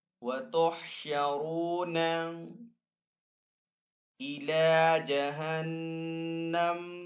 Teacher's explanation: آگے یہاں پہ طوا ہے، وقف مطلق کا سائن، تو یہاں پہ وقف کرنا بہتر ہے، وقف کرنے کی صورت میں یہاں پہ میم کو ہم ساکن کریں گے